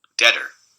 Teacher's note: a tap or a flap is going to show up as like a very short momentary lightning of the spectrogram · the coronal stops in english do tapping or flapping in this intervocalic context